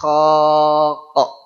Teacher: Adapun Q huruf q ya sedikit bergeser ke belakang lebih dekat kepada khnya tadi